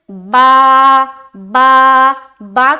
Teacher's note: دونوں ہونٹ جو ہوتے ہیں نا اوپر اور نیچے کے، اس کا جو تری والا حصہ ہوتا ہے نا وہ ہے با کا مخرج، تری والا اندر کی طرف جو تری والا حصہ ہے نا جو بھیگا ہوا ہوتا ہے وہ ہے با کا مخرج۔